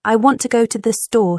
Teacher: American English emphasizes certain words in a sentence. For example, I want to go to the store stresses want and store.